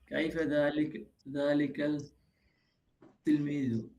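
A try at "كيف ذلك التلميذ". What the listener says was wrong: হ্যাঁ, তা সা জিম দাল জাল রাজা শিনশিন সাদ্দাত তা জা নুন, এগুলা শুরুতে আলিফ লাম আসলে লামটাকে অস্পষ্ট করে পরের শব্দে তাসদিদ দিয়ে পড়তে হয়। কাইফাল তিলমিজু হবে না, কাইফাত তিলমিজু। মানে আলিফ বা জিম হা খ আইন গইন ফা কফ কাফ লাম মিম ওয়াও হা ইয়া, এগুলো হরুফুল কমারিয়া, এগুলো শুরুতে আলিফ লাম আসলে লামটাকে স্পষ্ট করে পড়তে হবে।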